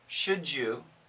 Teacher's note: if we say it quickly, should you, we get that J sound